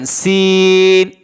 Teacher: সিন হলো জিহ্বার আগা, সামনের নিচের 2 দাঁতের আগার সঙ্গে লাগায় সিন অক্ষর উচ্চারণ হয়।